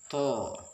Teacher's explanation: huruf to lebih tebal daripada ta. Ujung lidah menyentuh gusi bagian atas.